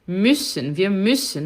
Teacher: quando eu tenho esse umlaut aí, eu faço um pouquinho de u e falo i